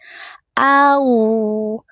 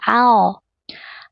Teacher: A dibaca tipis. Au, waw sukunnya monyong, tidak dibaca ao.